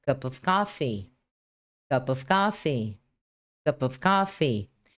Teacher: Percebeu que a palavra cup tem o som final de consoante. Of tem o som inicial de vogal e por esse motivo o som do P se ligou com o som do O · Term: Connected Speech